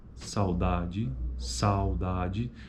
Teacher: Veja que na primeira sílaba, que é onde ocorre o ditongo é decrescente, por conta que a proeminência acentual é na vogal A. O U meio que some, ele reduz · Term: ditongo decrescente